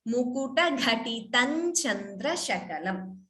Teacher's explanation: anuswara followed by cha, you could combine the sandhi and chant it as mukuta ghatitan chandra shakalam